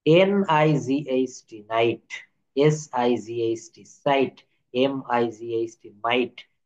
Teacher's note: IGH এর উচ্চারণে জি উচ্চারিত হবে না, সেই অংশটুকু উচ্চারণ হবে আই।